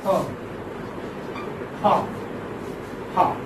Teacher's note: There is narrowing causing friction and friction, but without vibration in vocal cords. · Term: glottal